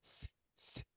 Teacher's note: If you want to touch your throat while saying s, s, no vibration. So this is voiceless.